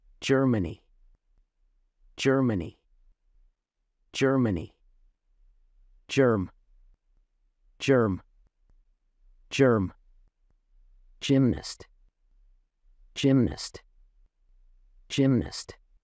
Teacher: sounds D and Z pronounced together